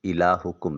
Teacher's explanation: ہا کو اقصی حلق سے ادا کریں، کم میں کاف کو باریک ادا کریں گے اور میم کے سکون کو کامل ادا کریں گے۔ میم کی ادائیگی کے وقت ہونٹوں کا خشکی والا حصہ تری والے حصے کی طرف موڑ لیں گے۔